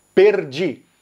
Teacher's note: o Rio Grande do Sul vai usar o R enrolado, o rolled R, perdi. São Paulo, capital, também pode falar assim, perdi, mas São Paulo mais interior e outras regiões vão usar o R retroflexo, perdi.